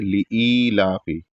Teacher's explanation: حمزہ کے بعد جو یا ہے وہ ساکن ہے، یعنی اس کو ہلکا سا کھینچا جائے گا ایک الف کے برابر